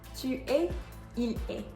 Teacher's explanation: you are going to hear the E but not the S